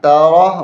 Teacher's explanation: را کو موٹا کرنا ہے